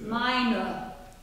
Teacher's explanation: ER at the end of the word is a really dark schwa